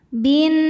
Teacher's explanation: Karena alif lam menghadapi huruf syamsiyah yaitu nun, maka alif lamnya tidak dibaca, masuk langsung ke nun. Bin. Kemudian nunnya hukumnya gunnah musyaddadah karena nun bertasydid. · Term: alif lam syamsiyah